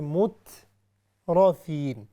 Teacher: یعنی اس کو موٹا کر کے پڑھنا ہے، لیکن صرف را موٹی ہوگی، تا موٹی نہیں ہوگی. ہم اس کو ایسے نہیں پڑھیں گے مترفین، چونکہ یہ پھر تا بن جائے گی تو وہ بھی غلطی ہوگی، یعنی لحم جلی ہوگی، بڑی غلطی. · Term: را ہیوی